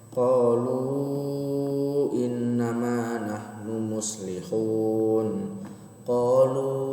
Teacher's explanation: di situ di qalunya dipanjangkan 4 sampai 5 harokat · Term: mad jaiz munfasil